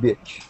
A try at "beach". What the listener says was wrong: Yeah, work on your pronunciation. We would pronounce it, just so you know, B-E-A-C-H. We would pronounce it B-E-E-C-H. Beach. Because if you said bitch, bitch is a very insulting term. Beach. So, yeah, be very careful of your pronunciation.